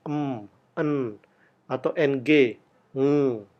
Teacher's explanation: atau nasle area jadi seperti m n atau ng ng itu kita ciptakan udara keluar lewat hidung · kita ciptakan udara keluar lewat hidung sehingga bunyi ini menjadi bunyi nasal